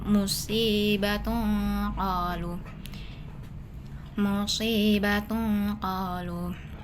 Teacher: Jadi cara membacanya disembunyikan atau disamarkan bunyi tanwinnya ke dalam musibatun qolu musibatun qolu bunyi nunnya samar dan berdengung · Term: ikhfa hakiki, ikhfa haqiqi